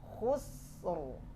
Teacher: Kenapa tebal di sini? Ra sukun, sebelumnya sukun, sebelumnya lagi berbaris dhammah, tebal.